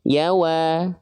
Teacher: Huruf ya-nya tetap tipis, huruf waw-nya tetap tipis. Jadi dua-duanya tipis.